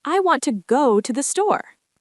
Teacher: Oh, you emphasized go and store, the important words. Exactly. In English, we stress the words that carry meaning, usually nouns and verbs.